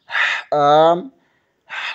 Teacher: جیم، وسط زبان بالمقابل اوپر کے تالو سے لگے تو جیم ادا ہوتا ہے۔ حا، حلق کے درمیانی حصے سے ادا ہوتا ہے